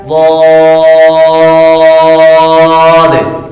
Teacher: زبان کی کڑوٹ اور اوپر کے داڑوں کی جڑ سے ادا ہوتا ہے، زبان کی کڑوٹ اور اوپر کے داڑوں کی جڑ سے ادا ہوتا ہے۔ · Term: حرف حافیہ